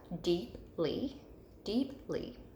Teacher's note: you can hear the long e in that first syllable so it's accented in the first syllable